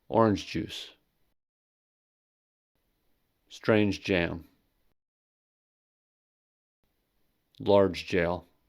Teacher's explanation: Affricates are j and ch. In a sequence of identical affricates, no special linking occurs and the sounds are pronounced twice in a row. · in the phrase orange juice, j is pronounced twice